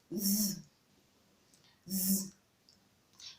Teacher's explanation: Yes, it is called the voiced dental fricative because it is voiced, meaning there's a vibration on your throat when you're actually articulating it. And then it is dental also, meaning that the tip of your tongue actually comes in contact with your teeth. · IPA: /ð/